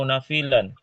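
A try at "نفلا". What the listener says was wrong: Bukan nafilan tapi naflan.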